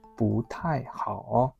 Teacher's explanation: When pu comes with fourth tone, then we should make this a second tone. So we say 不太, not 不太.